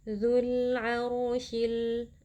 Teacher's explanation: yang merupakan huruf qamariah jadi lam sukunnya dibaca dengan jelas zularsi RO di sini kita baca dengan tafkhim atau dengan tebal karena ro sukun sebelumnya berharakat fathah